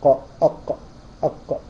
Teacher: والقاف اقصى اللسان فوقه اقصى اللسان مع الحنك اللحمي بس من اعلى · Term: أقصى اللسان